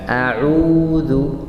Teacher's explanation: Ketiga huruf waw keluar dari bibir. Dan waw karena sukun panjang ya, 2 harakat.